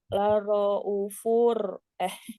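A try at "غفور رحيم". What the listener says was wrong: panjang U-nya. U-nya panjang. Laro, u.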